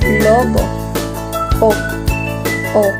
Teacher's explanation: Ito ay gitnang palikod, nasa likod ang dila at bahagyang pabilog ang labi tulad ng salitang lobo.